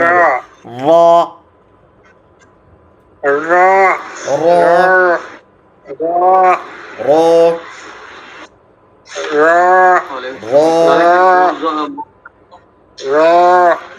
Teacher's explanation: তার বরাবর উপরের তালুর সাথে লাগাইয়া, হ্যাঁ লাগান তো। জিহ্বার আগার উল্টা পিঠ তার বরাবর উপরে তালুর সঙ্গে লাগাইয়া, এটা হলো র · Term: 10 নাম্বার মাখরাজ